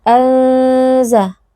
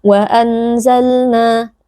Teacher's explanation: Anza, ikhfa hakiki karena ada nun sukun yang bertemu dengan huruf zai dibaca dengan dengung yang dipanjangkan ya, tidak boleh wa anzalna Tidak boleh dibaca seperti itu, tapi harus didengungkan dengan dengung yang samar dan dipanjangkan. Wa anzal, huruf lam bainiyah, maka pastikan ada sedikit aliran suara.